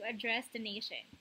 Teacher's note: address which is a verb is stressed in the second syllable